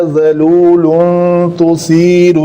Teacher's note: لام کے اوپر تنوین ہے تو یہ اخفاء ہوگا کیونکہ اس کے بعد تا آ رہا